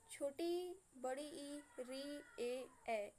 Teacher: वे स्वर जिनके उच्चारण में जिह्वा का आगे का भाग मतलब अगला भाग क्रियाशील रहता है, मतलब जिनको हम लोग अपनी जिह्वा के आगे के भाग से बोलते हैं उन्हें हम अग्रस्वर कहते हैं।